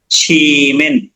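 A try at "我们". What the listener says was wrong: এইটা এটা শ্রী না, ওয়ামেন, ওয়ামেন।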